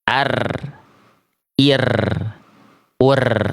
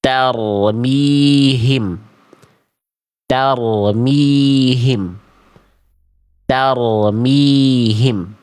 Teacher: Jadi getarannya itu bukan getaran yang berlebihan, tapi juga tetap ada getarannya. Jadi nggak dibaca ar, ir, ur, ataupun ar, ir, ur. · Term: ro sukun